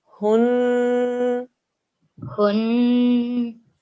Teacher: when it's a noon mushaddad, we have to do a 2 second ghunna sound. So we say hun.